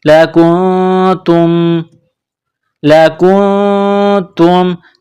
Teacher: نون کے ساتھ ملانا ہے، نون ساکن کے بعد تا ہے، حروف اخفا ہے تو یہاں غنہ کریں گے، آواز ناک میں چھپائیں گے